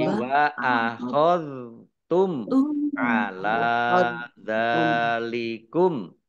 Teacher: Dal sukun ini bukan kolkolah. Jangan dibaca memantul.